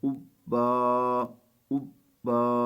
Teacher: آخر میں 2 زبریں آ جائیں تو ایک زبر جو ہے وہ یہاں پہ اس طرح پڑھنا ہے کہ آخر میں الف پڑھا جائے گا